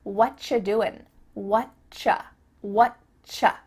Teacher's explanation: we've cut out completely the word are, and the word you just becomes cha. · the end of the word doing, that G, also gets cut out.